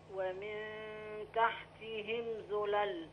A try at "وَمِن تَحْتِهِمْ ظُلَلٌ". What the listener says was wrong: أيوه.